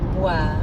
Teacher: Je veux boire. Boire also has that same wa sound as froid and moi. And it ends with our favorite French R sound. Boire. Let's try saying that.